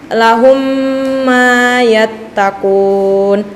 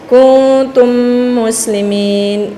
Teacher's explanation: Jadi teman-teman, idgham mimi artinya memasukkan mim sukun pada huruf mim disertai dengung apabila ada mim sukun bertemu dengan mim. Contohnya lahum mayattaqun atau kuntum muslimin.